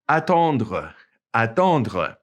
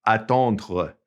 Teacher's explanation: it's pronounced kind of glottally. Attendre. It's kind of back in the back of your mouth, okay? Here's another one.